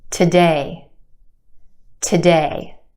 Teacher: Our second syllable has the stressed or emphasized vowel sound.